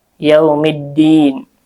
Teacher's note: alif lamnya alif lam syamsiyah, dibaca idgham